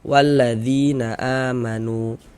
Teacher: maka huruf yang memiliki tanda baca kasrahnya dibaca panjang dengannya dzi dibaca panjang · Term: mad thabi'i